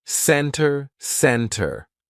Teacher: So, let's look at the silent T. Usually, if the T comes after an N, we drop that T and we do not pronounce it.